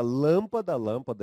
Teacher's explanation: lâmpada já tem um som fechado